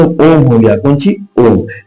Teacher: प्लुत स्वर जैसे ओम हो गया कौन ओम इसमें सबसे ज्यादा समय लगता है